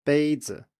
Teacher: after a high tone the first tone the neutral tone is lower